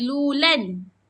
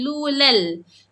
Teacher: Kita masukkan huruf lam pada tanwin. Jadi bacaan dia lulalna. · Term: idgham